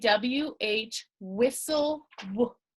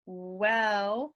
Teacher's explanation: you have a puff of air that comes out of your mouth